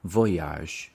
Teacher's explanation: the stress fall on the first syllable